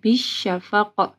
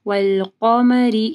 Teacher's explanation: قاف کو جو ہے موٹا پڑھنا ہے اور قاف کے اوپر قلقلہ بھی ہوگا